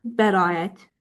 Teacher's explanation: bəraət sözündə a-nı uzun tələffüz eləyirsiz. Eynə qiraət sözündə də yenə siz a səsinə uzun tələffüzünə rast gəlirsiz.